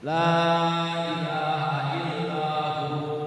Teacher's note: maka waw tersebut jadi mad tabi'i ya. Jadi nantinya dibacanya illa hu ya, dua harakat.